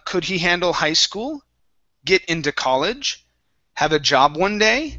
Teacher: you want your voice to go up